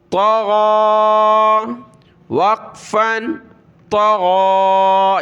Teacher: شی۔ طا زبر طا، عین کھڑا زبر غا، طغا، وقفاً طغا، یہاں بھی طا کو موٹا کرنا ہے، غین کو گلے سے نکالا